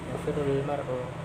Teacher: ketika membacanya alif lamnya tidak nampak. Yafirrul mar'u langsung ke lam.